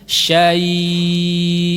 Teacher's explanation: lin arid lisukun ada panjangannya karena dia diwakafkan